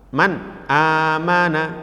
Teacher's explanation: ketika ada nun sukun atau tanwin bertemu dengan salah satu huruf alif Haq maka dibaca jelas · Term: izhar